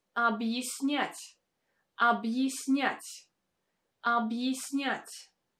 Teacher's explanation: Again, here you can notice that this letter Я is not pronounced as Я, but as Е, because it stands in the unstressed position.